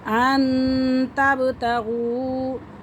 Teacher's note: واو ساکن سے پہلے پیش آ رہی ہے، تو اسے ہم 1 سے 2 الف کے برابر کھینچ کے پڑھ سکتے ہیں۔